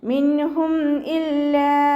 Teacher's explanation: മിൻഹും ഇല്ലാ നൂന് കൽക്കലയുടെ ലെറ്റർ അല്ലാത്തത് കൊണ്ട് ഹാഫ് സുക്കൂന് കൊടുത്തിട്ട് ഉച്ചരിക്കുക. മീം സാക്കിനയ്ക്ക് ശേഷം ബാവും മീമും അല്ലാത്ത അക്ഷരം വന്നതുകൊണ്ട് മീം സാക്കിനയെ വ്യക്തമാക്കി ഉച്ചരിച്ചു കൊടുക്കുക. ഇദ്ഹാർ ഷഫവി.